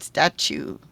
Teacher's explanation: The T, when it's next to the U, has a ch sound